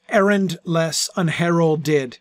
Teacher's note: I love the shifting of the L and the D, to me, that's the most prominent sound in those words, errandless, unheralded, because you pronounce, it's not a word like emerald, where you hear the L, but it's not really a very prominent LD, because it's not in the middle of the word, it's at the end, right? So you kind of swallow it